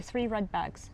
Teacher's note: you kind of rolled your tongue, which is also typical for the Indian accent